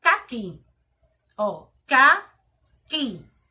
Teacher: Sílaba mais forte, que. Que é a última sílaba mais forte. Então, logo, caqui é uma palavra oxítona.